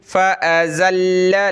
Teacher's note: लाम को सख्ती से पढ़ना है तशदीद की वजह से